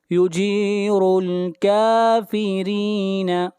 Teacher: پڑھیں گے، را کو ملائیں گے لام کے ساتھ، یجیر الکافرین، را کو باریک پڑھیں گے، را کے نیچے زیر ہے